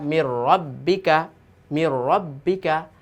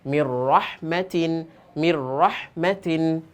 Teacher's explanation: এখানে আমরা দেখতে পাচ্ছি ঈদগামে বেলাগুনা হরফ দুইটি, র লাম নুন সাকিন তানবিনের পরে বেলাগুন্না দুইটি হরফের যে কোনো একটি হরফ আসলে বেলাগুন্নার হরফে তাসদিদ দিয়ে গুন্না ছাড়া মিলাই পড়িত হয়